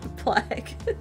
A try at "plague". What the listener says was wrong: It's plague. With a long A. Not a short A.